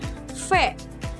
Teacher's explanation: Untuk menghasilkan suara ini, bibir bawah didekatkan ke gigi atas. Membentuk celah sempit, udara mengalir melalui celah ini menghasilkan suara yang bergetar. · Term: spiran bibir gigi